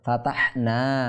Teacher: আলিফ মাদ্দা হয়েছে টেনে এক আলিফ সময় দীর্ঘ টেনে পড়তে হবে ফাতাহনা এটাকে একটু চাপ দিতে হবে ফাতাহনা বলব না ফাতাহনা এটা · টেনে এক আলিফ সমপরিমাণ দীর্ঘ টেনে পড়তে হবে